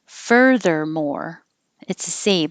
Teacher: Your tongue is curled back, has to go up for the D and then right back to the R.